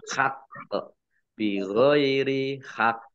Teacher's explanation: qaf sukun ini di akhir kata, ini kolkolah subro, tampakkan ya, lebih ditampakkan memantulnya